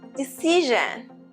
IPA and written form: dɪˈsɪʒ.ən (decision)